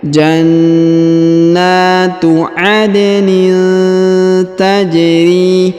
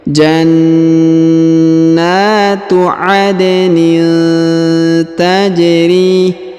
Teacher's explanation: Huruf na ditahan dan ditekan karena terdapat tanda tasdid, lalu dipanjangkan 2 harokat karena terdapat alif kecil.